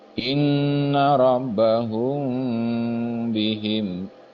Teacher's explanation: mim sukun bertemu dengan ba itu harus dibaca ikhfa ditahan sama seperti ikhfa pada umumnya